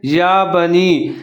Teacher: نون کے نیچے زیر ہے، یا ساکن ہے تو نون اور یا ملا کے پڑھیں گے